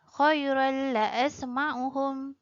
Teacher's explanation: Apabila tanwin dua baris atas bertemu dengan huruf lam, hukum tajwidnya ialah idgham bila gunnah.